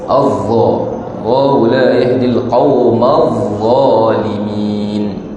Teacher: Huruf dha, hujung lidah berada antara 2 gigi.